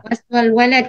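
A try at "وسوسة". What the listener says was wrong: Waswasa, tidak ada la. Waswasa tidak ada la.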